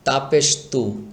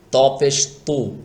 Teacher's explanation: তা চিকন হবে আর ত মোটা করে পড়তে হবে